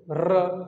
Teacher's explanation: अगर हम र का उच्चारण करते हैं तो हम 3 से 4 बार र बोल देते हैं। बोलो देखो र, तो एकदम जीभ एकदम तड़प जा रही है, एकदम से ऐसे कंपन हो जा रहा है कि नहीं हो रहा है? · जिसका उच्चारण करने में हमारी जीभ में कंपन उत्पन्न हो जाए उसे बोलते हैं प्रकंपित या कंपित। कभी कभी प्र नहीं लिख के कंपित लिख देगा तो भी सही है, उसे क्या बोलेंगे, र बोलेंगे।